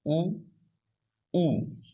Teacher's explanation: चौथा है ओष्ठा, ओष्ठ होठों से उच्चारित स्वर, और वो दो हैं